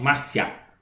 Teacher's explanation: O I é minha semivogal, é mais fraco. O A é mais forte, Márcia. O A é mais forte, então tem a semivogal I com a vogal A. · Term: ditongo crescente